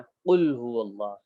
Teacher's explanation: تو قاف کا مخرج کیا ہے؟ زبان کی جڑ جہاں سے زبان شروع ہو رہی ہے اس کے بالمقابل اوپر کا تعلق سے قاف نکلتا ہے